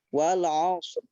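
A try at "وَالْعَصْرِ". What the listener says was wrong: Ro-nya ditambahkan. Wal 'asr. ro itu disentuhkan di gusi atas, harus menyentuh. Asr. Asr.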